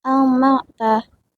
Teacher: nun mati dibaca jelas karena bertemu huruf ain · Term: izhar halqi